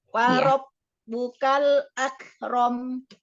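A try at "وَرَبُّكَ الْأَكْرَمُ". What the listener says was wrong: Kaf sukun, apa namanya itu sifatnya syiddah ya, dan hamas ya. Syiddah, iya. Jadi syiddahkan dulu, tahan dulu suaranya ya di makhraj huruf kaf, baru lepaskan udaranya atau nafasnya. Jadi tahan dulu, baru lepaskan. Jadi nggak berbarengan, nggak akrom nggak. Tapi tahan dulu. Akrom, Jadi tahan dulu di makhrajnya. Akrom, baru lepaskan.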